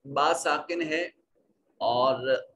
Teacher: با ساکن ہے، یہاں قلقلہ ہوگا